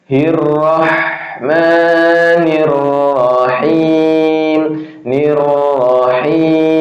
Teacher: huruf ha ini adalah hams, nafas masih jalan keluar, kemudian dia juga rohwah.